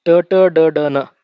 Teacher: ಟ ಟ ಡ ಡ ನ ಇವನು ಹೇಳಬೇಕಾದರೆ ನಮ್ಮ ನಾಲಿಗೆ ಮೇಲ್ಭಾಗವನ್ನ ಸ್ಪರ್ಶ ಮಾಡುತ್ತದೆ